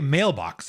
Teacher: there are 2 stressed syllables in mailbox